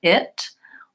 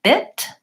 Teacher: And it's all about the position of my tongue and how open my mouth is. So when I'm saying the I vowel, it's lax, but my mouth is not very open and my tongue is near the front.